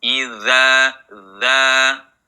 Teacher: makhraj huruf dza nah ujung lidah bertemu ujung gigi seri atas